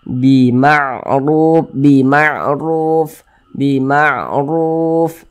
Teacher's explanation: tanda baca domah atau harakat dah maka dibaca tebal dibaca tkhim sehingga pangkal lisan kita itu naik terangkat ke atas ketika Kita mengucapkannya huruf r-nya kita tebalkan · Kemudian sebelumnya ada huruf yang memiliki tanda baca dhammah, maka huruf yang memiliki tanda baca dhammah yang berposisi tepat sebelum huruf waw sukun, maka huruf tersebut dibaca panjang. Makanya ru dibaca panjang. Mad tabi'i panjangnya 2 harokat. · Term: tafkhim